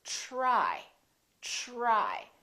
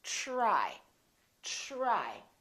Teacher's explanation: So the TR together make this sound almost like a CHR, almost like ch, but it's a softer one.